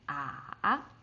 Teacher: you start from slightly lower than your natural range and go all the way down to the bottom and then go up again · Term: third tone